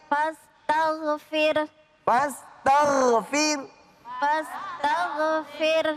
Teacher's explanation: ro diiringi oleh harakat kasrah maka dibaca tarqiq